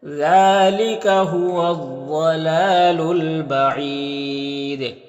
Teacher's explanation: الف کو نہیں پڑھیں گے، یہاں پر یا مدہ ہے اور یہاں پر اگر وقف کریں گے تو دال میں قلقلہ ہوگا اور مد عارض وقفی ہوگا